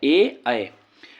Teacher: इसका उच्चारण स्थान कंठ और तालु है, इसमें वर्ण ए और अ आता है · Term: कंठ तालु